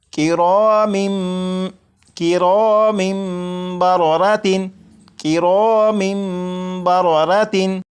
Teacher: जब तनवीन के बाद बा है तो यहाँ पर इकलाब होगा, यानी यहाँ पर तनवीन के अंदर जो नून साकिन की आवाज़ होती है उसे मीम से बदलकर गुन्ना करके पढ़ेंगे